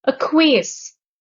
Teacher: The stress is on the third syllable, the last syllable